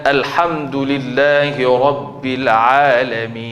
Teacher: bila sebut Alhamdulillahi Rabbil Alamin, jangan tutup mulut. Bila dia tutup mulut, dia tukar daripada nun jadi mim.